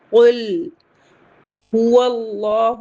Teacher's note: قل هو اللہ، ہا کو جلدی پڑھیں گے، واللہ حمزۃ الوصل نہیں پڑھیں گے کیونکہ لام شمسی لیٹر سے آ رہا ہے، تو واو کو لام سے ملا کر پڑھیں گے، اور لام جلالہ کو ہیوی پڑھیں گے کیونکہ اس سے پہلے زبر آ رہا ہے، اور لام کے اوپر کھڑا زبر ہے تو اسے 2 کاؤنٹ پڑھیں گے کیونکہ مد حکمی مد اصلی کے برابر ہوتے ہیں۔